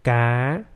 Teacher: You have to raise the voice from the sol note to the do note to make the rising tone.